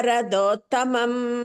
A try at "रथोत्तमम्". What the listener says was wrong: Radho is not there. Ratha tha. Ratha tha tha tha tha. Tha tha. Small tha is tha. Big tha tha. Radhottamam. Ratha is not called Radhottamam.